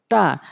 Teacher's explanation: জিহ্বার আগা সামনে দুই দাঁতের গোড়াতে লাগাবেন তাহলে তা সঠিকভাবে উচ্চারণ হবে